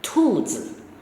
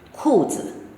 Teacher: the child is using t, tu for k, ku, and it's also called a substitution